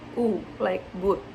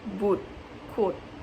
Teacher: And this means that the corner of the mouth are drawn together and the lips protrude like a tube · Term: Lip rounding vowels